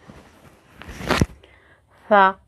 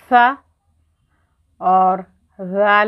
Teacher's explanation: ये ऊपर वाले सनाया औलिया और ये ज़बान थोड़ी सी बाहर की तरफ निकलती है। ठीक है, जब सा अदा करते हैं तब भी थोड़ी सी ज़बान बाहर निकलती है, ज़ाल अदा करते हैं तब भी क्या है हमारी बाहर निकलती है ज़बान